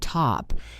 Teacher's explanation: Sometimes it is a true T, like in the word top, where it is crisp and has a puff of air.